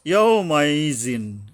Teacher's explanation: ইয়ার উচ্চারণে সাবধান হতে হবে পাতলাভাবে জিব্বের মাঝখান থেকে